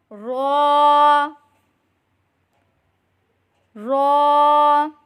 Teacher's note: زبان کی نوک اور مقابل کے تالو سے ادا کریں